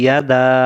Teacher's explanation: দাল অক্ষরটাকে 3 আলিফ সমপরিমাণ টান দিতে হয়